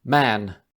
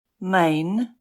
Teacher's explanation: So it went from the short, ah, to the, a mane.